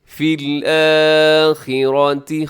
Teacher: خا موٹا ہے، را موٹا ہے